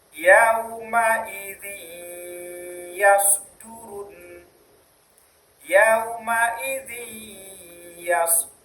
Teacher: karena dia bertemu dengan ya, maka huruf nunnya hilang menjadi yaumaidin yasdurun yaumaidin yas masuk ke bunyi ya. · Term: idgham bighunah